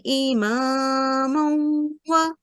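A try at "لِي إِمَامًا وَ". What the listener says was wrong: You missed this li. Li.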